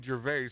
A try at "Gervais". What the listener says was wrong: I think the S is silent. Gervais.